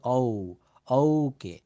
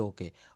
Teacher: ও না বলে যৌগিক ধ্বনি হবে ঔ, ঔ।